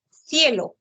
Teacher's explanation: cuando está frente a la vocal i e debe ser la fricativa interdental